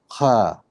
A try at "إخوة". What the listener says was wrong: No, not خا. إخ.